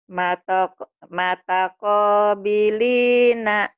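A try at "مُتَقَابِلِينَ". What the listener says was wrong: Bukan mata tapi muta. Muta kobilina.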